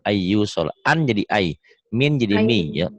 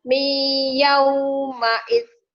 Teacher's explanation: Nun mati atau tanwin ketemu ya jadi idgham bigunah